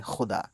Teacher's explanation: خے، خے حلق سے اسٹریس دینا آپ کو